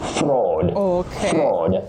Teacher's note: A digraph is a combination of two letters representing one sound. So, A and U combine to form the long low back sound aw. So, you say fraud.